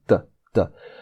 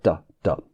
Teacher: It's almost like the T sound in Spanish, but less dental. It's more alveolar sound